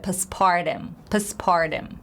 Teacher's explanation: T becomes flap T sound, which is T, D, and R in between